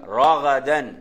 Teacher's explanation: ராவும் உயர்த்துறது, கைனும் உயர்ந்து வரக்கூடிய எழுத்து தான். தால் தால் சாதாரண வரக்கூடிய எழுத்து. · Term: உயர்த்தக்கூடிய எழுத்து